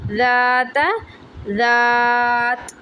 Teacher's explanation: अलिफ मद्दा के बाद साकिन आ जाए तो अलिफ मद्दा को वक्फ़ में 3 से 5 सेकंड के लिए लंबा किया जाएगा